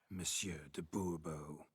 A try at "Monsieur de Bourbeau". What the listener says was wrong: The emphasis falls on the last syllable. Bourbeau?